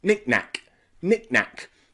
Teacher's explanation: The CK in the middle becomes reduced. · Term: glottal stop